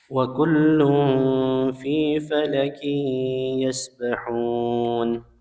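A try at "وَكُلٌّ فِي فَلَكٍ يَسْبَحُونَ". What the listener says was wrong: Tadi huruf lanya kurang tebal.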